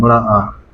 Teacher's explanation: विवृत मतलब जो आपका मुख का आकार है। विवृत में आपका सिर्फ आ आता है, बड़ा आ।